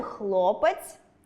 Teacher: У слові хлопець [хлопеиц'] - звук [е] також ненаголошений і наближається до [и]